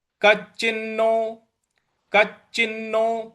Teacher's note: क के बाद जो च है इस पर हमको बल लगाना है